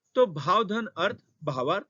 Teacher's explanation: तो भाव तो व में जो अ है, भाव अ और अर्थ का अ, दोनों छोटा अ और छोटा अ मिलाकर आ बन जाता है। तो भाव धन अर्थ भावार्थ, यहाँ पे दीर्घ स्वर संधि।